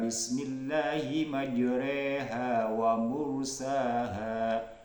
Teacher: memiringkan bunyi harakat fathah pada bunyi harakat kasrah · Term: bacaan imalah